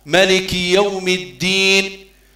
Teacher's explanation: الدين مع إظهار الدال أيضا لكي لا تقرأ تاء، ملك يوم الدين، لو كان ما تبينش حرف الدال يولي تاء، لأنهما يخرجان من نفس المخرج.